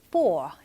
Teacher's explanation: for, 자, for 이렇게 돼 있는데 약간 미국식에서는 for 약간 이렇게 발음하는데 끝에 말을 그렇게 R을 그렇게 사운드를 내지는 않아요. 그래서 약간 있는 듯 없는 듯